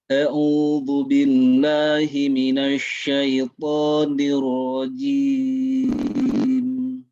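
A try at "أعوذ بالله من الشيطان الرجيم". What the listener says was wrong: Pak, lebih rileks lagi jangan dihem-hem suaranya. A'udzu billah, lebih rileks.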